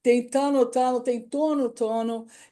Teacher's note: é sempre uma oclusivo, uma vogal e uma nasal